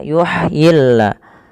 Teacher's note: Ha ada sifat hamesnya, mengalirnya nafas. Dan ha ini tidak boleh dibaca yuhyillah, tidak boleh dengan huruf ha besar, karena dia bukan huruf ha besar tapi ha kecil. · Sesuaikan dengan makhrajnya. Makhraj huruf ha kecil adalah dari tengah tenggorokan kita.